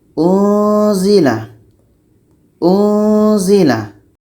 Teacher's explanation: Ketika kita sebut huruf nun, maka kita sudah merasakan huruf za. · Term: dengung